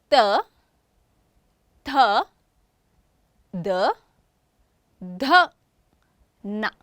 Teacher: These are dental sounds. Tongue near teeth.